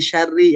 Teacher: jangan dibaca tebal karena di sini ro-nya kasroh